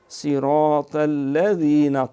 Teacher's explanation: طا موٹا ہے لیکن الذین کا لام باریک ہے